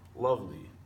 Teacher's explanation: a trochee is a stressed and unstressed syllable word such as lovely